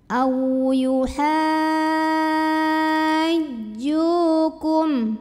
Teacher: Maka cara baca ha-nya ini wajib panjang 6 harokat ya, tidak ada perbedaan pendapat. Panjangnya 6 harokat dan ketika masuk ke jim pindah pakai naber. Agak dinaikkan intonasinya. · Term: mad lazim musaqal kilmi